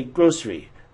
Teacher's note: we actually naturally reduce it to a two syllable reduction